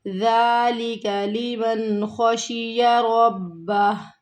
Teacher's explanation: خشیہ تینوں متحرک آ رہے ہیں، کسی کو بھی ہمیں یہاں پر نہیں کھینچنا